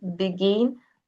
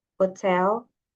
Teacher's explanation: the stress is on the second syllable. begin.